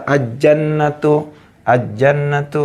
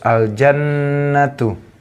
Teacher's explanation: ini alif lam bertemu dengan huruf jim. Maka alif lamnya dibaca jelas atau terang. Jelas. Tidak boleh dibaca al-jannatu, al-jannatu. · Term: izhar komariah